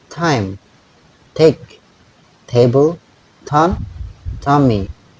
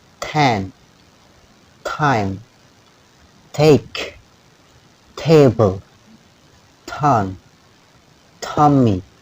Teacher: Jadi cara membaca plosive ta, t itu juga ada ledakan sama dengan bunyi k, p dan sekarang t. · Jadi ada bunyi plosive atau ledakan seperti disertai angin